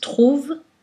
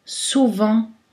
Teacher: Dans trouve, il n'y a pas de voyelle nasale, mais dans souvent, il y a une voyelle nasale.